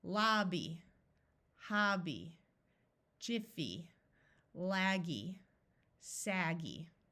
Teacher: a vowel in the middle so the vowel will be short these syllables end in a y but it's not an accented syllable so it will have the long e sound